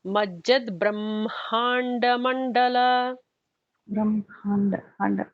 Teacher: the actual emphasis comes because there is a ha and a ma, right? So the emphasis is going to be on that ma kind of syllable there.